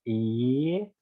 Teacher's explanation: when you say e and you open your mouth, e, that e sort of transforms into a y sound, as in a yes or yod.